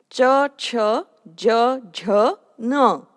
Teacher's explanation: These consonants belongs to the category of palatal consonants, which is called as talavya or talu in Konkani language.